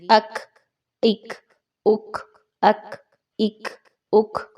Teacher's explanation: زبان کا آخری حصہ جڑ جو ہے وہ اوپر اٹھ رہی ہے اور وہ جا رہی ہے سخت تالو کے ساتھ · تو بہت ایزی ہے، دونوں کا مخرج آلموسٹ ملتا جلتا ہے، بس ایک بات جو بہت اہم ہے وہ یہ ہے کہ زبان کا جو آخری حصہ ہے جس کو ہم نرم تالو کے ساتھ ملا رہے تھے، اب آپ نے اس کو سخت تالو کے ساتھ ملا دینا ہے۔ زبان کا آخری حصہ اوپر کی طرف اٹھائیے اور سخت اس کے بمقابل تالو جو سخت تالو ہے اس کے ساتھ ملائیے، تو کاف کی ادائیگی ہوگی اک اک اک اک اک اک۔